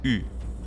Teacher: It's worth mentioning that the sound that is representing Y in Hilduir does not occur in English, but it's basically like pronouncing E while rounding your lips